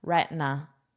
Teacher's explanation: Notice how I pronounce this with the very flat T.